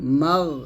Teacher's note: আমরা এখানে একটা ভুল করি মাগ বলি অর্থাৎ আমরা কলকলা করে ফেলি তো কলকলা করা যাবে না বলতে হবে জবর মা এরকম গাইরিল মাগদুবি আইন জবর আলাম ইয়া